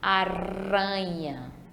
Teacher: na palavra aranha tem apenas um R para ter esse som fraco e a gente faz essa dobrinha na língua